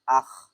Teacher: হলকের শেষ অর্থাৎ কণ্ঠনালীর শুরু থেকে গইন খ উচ্চারিত হয়